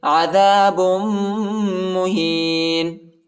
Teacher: با کو میم کے ساتھ ملائیں گے، میم پر شد آیا ہے، اور ادھر ہم غنہ بھی کریں گے